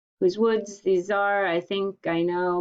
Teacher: that means that it has 10 syllables in every line and those syllables go in a pattern like a heartbeat unstressed stressed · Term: iambic pentameter